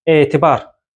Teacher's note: Laqeyd sözündə birinci hecada səs uzanması baş verir.